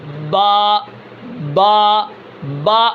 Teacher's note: با نکلتی ہے دونوں ہونٹوں کے تری والے حصے کو ملانے سے